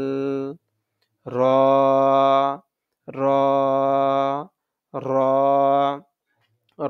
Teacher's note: এর উচ্চারণের সময় জিহ্বাতে কম্পন আসবে।